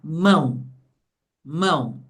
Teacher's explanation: Abre a boca uma vez só e o E assume o som do I. Por isso que aqui o E é uma semivogal. · é uma abertura de boca só. E o O tem o som do U